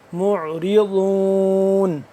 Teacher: ضاد زبان کی جو بائیں کروٹ کو اوپر والے داڑوں کے ساتھ جب ٹچ کریں گے تو ضاد اپنی جگہ سے اپنے مخرج سے صحیح طریقے سے ادا ہوگا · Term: ضاد کا مخرج